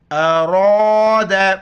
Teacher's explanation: را کے اوپر زبر ہے موٹا کر کے پڑھیں گے